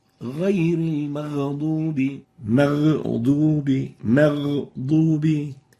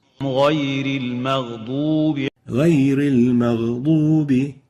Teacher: No qalqala. So take in consideration the softness characteristic of the ghain, which doesn't allow it to be having qalqala